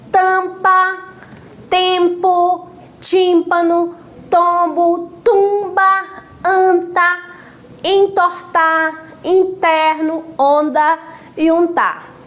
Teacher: Se você for pronunciar, você vai sentir, né, o som mais forte pelo nariz. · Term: nasalizados